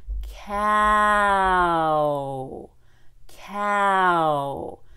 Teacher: Americans tend to start with the short a